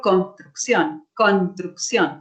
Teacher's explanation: la S de ese construcción prácticamente no se articula · en esta combinación, la S prácticamente se omite, prácticamente hay un proceso de supresión